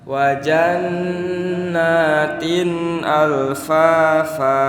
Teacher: tanwin yang bertemu huruf alif kira-kira ditahan atau tidak bapak tidak karena Alif itu termasuk huruf Izhar huruf Izhar huruf yang harus dibaca jelas